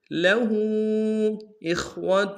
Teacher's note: الٹا پیش کے اوپر چھوٹا سا مد ہے، اس کو دو الف مقدار میں کھینچیں گے۔